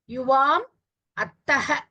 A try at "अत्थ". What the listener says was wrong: अत्थः महाप्राण.